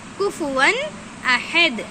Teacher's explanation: دال پر دو پیش کی تنوین ہے لیکن کیونکہ دال پر وقف کرنا ہے اس لیے کیا کرنا ہے، دال پر جزم لگا کر پڑھیں گے